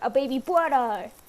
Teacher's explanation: instead of saying the R sound, she'll replace them with a W sound.